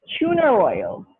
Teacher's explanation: they will insert an r that is originally not there it's not there in the spelling so it shouldn't be there in the pronunciation but they insert